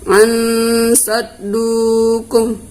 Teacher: Ya, di sini hukumnya ikhfa, nun mati ketemu dengan shad, maka kita baca samar dan berdengung.